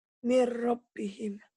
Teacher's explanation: Karena nun mati ketemu ro, maka nun matinya jangan dibaca. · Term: idgham bila guna